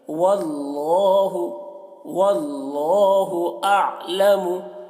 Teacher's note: अल्लाह को मोटा करके पढ़ेंगे